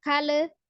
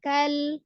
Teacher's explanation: Alifnya dianggap tidak ada, jadi langsung disukunkan ke huruf lam. Ya, tidak dipantulkan, hati-hati, jangan kale, tapi kal, ya.